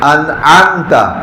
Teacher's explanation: یہ عین گلے کے سینٹر سے انعمت, درمیان سے نہیں نکالیں گے تو حمزہ بن جائے گا